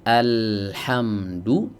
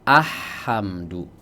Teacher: Adapun huruf qamariyah dibaca jelas karena dia jauh, tidak mungkin dileburkan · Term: lam qamariyah